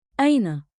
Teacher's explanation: One beat, like, in, with a light catch at the start.